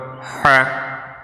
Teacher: এই হা হলকের মধ্যখান, এই মাকরাজ কিন্তু একটু কঠিন